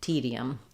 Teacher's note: You're not going to see it in the IPA necessarily, but because I'm moving from E to that gliding y sound kind of just happens there because of vowel to vowel linking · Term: y glide